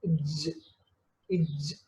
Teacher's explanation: Alveolar means teeth ridge. Some part of hard palate, some part of teeth ridge is touched. So that's why palato-alveolar. Manner is affricate. · there is vibration, that's why it is voiced. And place is palato-alveolar. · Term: ja sound